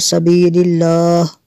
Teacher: یہاں پہ وقف کریں گے تو سبیل اللہ پڑھیں گے، ہاں کو ساکن کر دیں گے